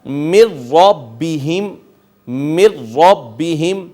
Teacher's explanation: जब रा पे इदगाम हुआ तो गुना नहीं किया गया · جب را پہ ادغام ہوا تو غنہ نہیں کیا گیا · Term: बिला गुना, ادغام بلا غنہ